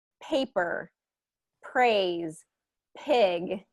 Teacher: we want to have more of that burst of air that voiceless sound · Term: p sound